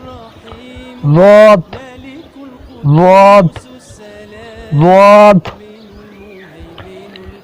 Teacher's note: next ज़ाद, हरूफ हाफिया, हरूफ हाफिया ज़बान की करवट और ऊपर की दाढ़ों की जड़ से अदा होते हैं